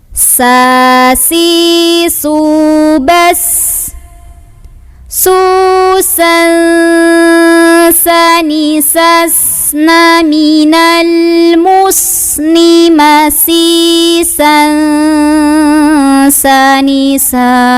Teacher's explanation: Nah, ketika sinnya ini didahului huruf yang berbaris fathah tanwin, maka fathah tanwinnya tidak dibaca lagi n, melainkan sudah samar-samar ke sin · S biasa, tipis dan ada desisnya, punya sifat namanya sofir. Jadi hati-hati ketika sukun, nanti alirkan suaranya ya, rokhawah, alirkan anginnya, hamas, dan ada desisan sofir. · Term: ikhfa